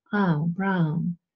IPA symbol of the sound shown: aʊ̯